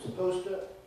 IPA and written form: səˈpəʊstə (supposed to)